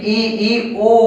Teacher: जब भी ई ऊ बोलेंगे तो मुख आपका बंद रहेगा, चाहे आप बोल के देख लीजिए। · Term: समृत